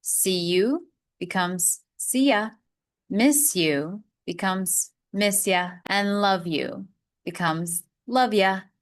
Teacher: With the word you, it is most commonly changed to the sound ya.